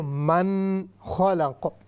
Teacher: نون ساکن ہے، اس کے بعد خا رہی ہے، خا حروف حلقی میں سے ہے، تو اس لیے یہاں پر ہم غنہ نہیں کریں گے